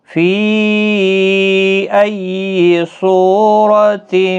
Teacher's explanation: فی یہاں پر مد منفصل ہے، 3 الف کی مقدار کے برابر کھینچ کر پڑھیں، چھوٹی مد ہے، تشدید کا خاص خیال رکھیں۔